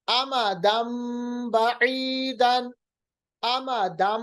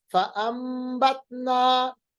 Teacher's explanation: देखिए नून की आवाज बिल्कुल हट गई, नून की आवाज मीम में तब्दील हो गई क्योंकि दो जबर के बाद बा आ रहा है। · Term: इक़लाब